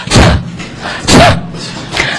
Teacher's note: is not like the Chinese or English T, the soft D, but you have to blow out air. It sounds like T.